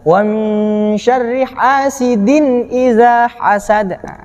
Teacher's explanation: Hasad masih tetap qalqalah kubra, harus dipantulkan.